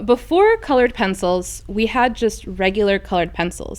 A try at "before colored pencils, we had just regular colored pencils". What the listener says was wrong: Hold on, that sentence was right. it almost sounded like you were saying it in italics, like, well, before colored pencils, we had colored pencils.